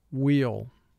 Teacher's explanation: most people now only use the w sound when they are pronouncing a word with the wh team